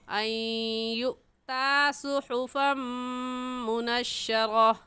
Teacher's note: ان یؤطا کی نون ساکن پر ہم غنہ کریں گے کیونکہ نون ساکن کے بعد حروف یرملون میں سے یا آ گیا ہے، تو ہم اسے ان یؤتا نہیں کہیں گے بلکہ کیا کہیں گے ان یؤتا۔ حمزہ ساکن ہے اور حمزہ ساکن پر جھٹکا دیتے ہیں تو یوتا کہنا غلط ہوگا اور صحیح ہے ان یؤتا صحفا منشرہ۔